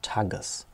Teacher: unsere erste silbe ta hat am ende keine schließung mehr sie ist also offen